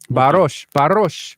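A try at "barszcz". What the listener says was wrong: You're rolling the R like the Mexican R. Barosh. It's Barosh. Barosh.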